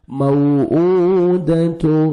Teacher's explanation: واو مدہ کے قائم مقام ہے، آپ نے 1 سیکنڈ اس کو ایک الف کے برابر کھینچنا ہے۔